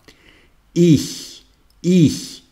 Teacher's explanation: On prononce comme ch. Le CH allemand est un son intermédiaire entre le H aspiré et le ch.